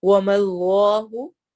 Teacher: اس میں جلالہ کلام موٹا پڑھا جائے گا